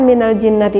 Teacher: cara pembacaannya mendengungkan nya ini sangat membutuhkan sekali akan rongga hidung karena eh makhrojnya yang keluar dari al-khaisyum yaitu dari rongga hidung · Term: ghunnah musyaddah